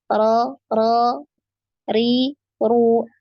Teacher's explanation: karena huruf ro ini bukanlah huruf bibir ya tapi huruf lidah maka ketika mengucapkan huruf ro Ini bibir bawah kita itu gak